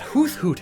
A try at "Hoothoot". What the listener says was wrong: Sorry, did you just pronounce the th in Hoothoot? That's disgusting.